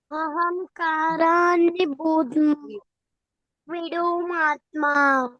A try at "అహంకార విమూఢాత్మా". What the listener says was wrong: విడు కాదు, విమూఢాత్మా.